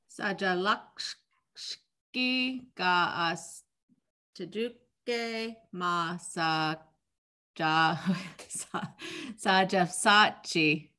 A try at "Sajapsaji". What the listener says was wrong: Saja Psachi. Yeah, get that higher tone at the end.